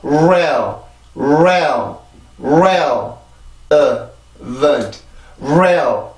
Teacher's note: 그리고 여기 있는 이 R 발음이 지금 강세에 있는 음절의 시작이잖아요. 이렇게 강세에 있는 음절의 시작이 R 발음일 경우에는 입술이 앞으로 길게 나오고